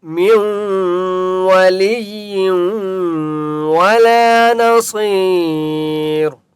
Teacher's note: میم کو واو کے ساتھ ملائیں گے، اس نون کو نہیں پڑھیں گے، ٹھیک ہے، اسے کہتے ہیں ادغام کرنا، اور یہاں پر غنہ بھی ہوگا۔